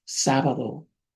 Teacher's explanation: It's not a strong th, just a little bit of it. It's like th and a d mixed.